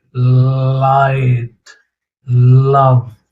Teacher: Air escapes around one or both sides of the tongue. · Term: Lateral sounds